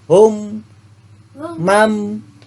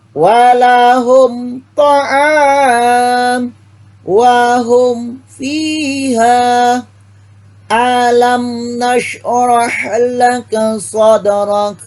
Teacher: Huruf yang dibaca terang pada bacaan ini adalah huruf mim mati. Jadi mimnya terdengar jelas, terang. Mimnya hum misalnya. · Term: izhar syafawi